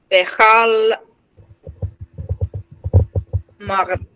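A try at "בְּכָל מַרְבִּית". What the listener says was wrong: Nice.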